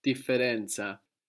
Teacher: we have the two F's and we pronounce them both